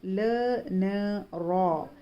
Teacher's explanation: ज़बान की नोक तालू के इब्तिदाई हिस्से को लगने से ल, न, र अदा होते हैं। ल और न बारीक सिफत वाले हैं, बारीक पढ़े जाएंगे, जबकि र शर्तिया है, कभी मोटा कभी बारीक पढ़ा जाएगा।